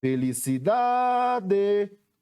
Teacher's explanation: Qual foi a sílaba que eu pronunciei com mais intensidade? Aquela que eu mais demorei pronunciando? Foi a sílaba da. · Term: sílaba tônica